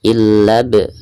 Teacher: Baik, selanjutnya illa btigha, di sini hamzah wasol, maka tidak dibaca ya, karena posisinya ada di tengah-tengah kalimat. Jadi dari ila langsung ke ba sukunnya, illab, seperti itu.